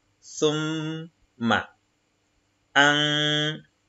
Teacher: le noun est écrit sans le soukoun. Ce n'est pas qu'il est muet, ok, mais il faut ici lui appliquer la nasalisation. Donc, on va dire an, alors que quand il a son soukoun, on va lire tout simplement an.